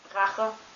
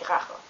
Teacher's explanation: it's kind of like the sound you make when you pull up snot before you spit it out